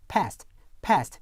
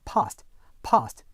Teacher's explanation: 일반 미국 영어에서는 에로 발음되는 모음이 영국 표준 영어에서는 아로 발음되는 경우가 있습니다.